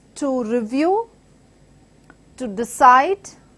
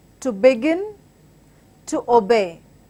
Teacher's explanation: all these take the stress on the second part of the word